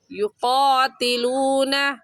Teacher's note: قاف موٹے حروف میں سے ہے، موٹا کر کے پڑھیں گے، یعنی اپنے دونوں ہونٹوں کو گول کر لیں گے